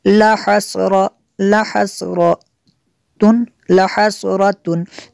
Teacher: تنوین کے بعد عین ہے حروف حلقی میں سے تو یہاں پہ اظہار ہوگا، غنہ نہیں کر سکتے۔